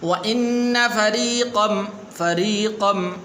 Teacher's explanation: را کے نیچے زیر ہے تو اس لیے آپ اس کو باریک پڑھنا ہے